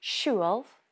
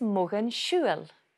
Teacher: when it's in the genitive form, for example, mogan siúil, ways of travelling, mogan siúil, the L sound becomes a slender L